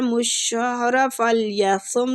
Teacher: صاد مستعلیہ پور پڑیں گے ، ومن کان نون کا ادھر بھی اخفا ہو رہا ہے،